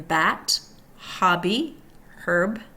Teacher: voiced. Closed lips stop airflow, releasing it through mouth.